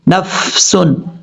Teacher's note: فا میں قلقلہ نہیں کرنا